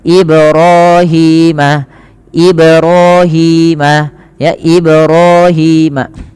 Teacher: Yang kedua yaitu menambahkan hamzah pada lafal bunyi ba, Ini juga salah. Harusnya dipantulkan dan tidak menambahkan hamzah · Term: qalqalah